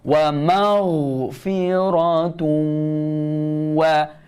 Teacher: Idgham ma'al gunnah. Masuk dengung pada huruf waw.